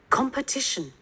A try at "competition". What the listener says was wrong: Competition. Per không phải ba. Competition. Uống lưỡi lên trên luôn.